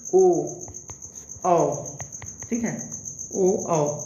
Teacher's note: मुंह हमारा गोल के आकार होता है ना वर्तु उ वर्तु वृत्ताकार ऊ बोलेंगे तो हमारा वृत्त जैसा मुंह हो जाएगा गोला हो जाएगा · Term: वृत्त मुखी